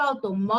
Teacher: Perceba que o mó você falou com mais intensidade